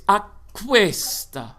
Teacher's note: give a little space for the k of questa and a little hiss of the s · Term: phrasal doubling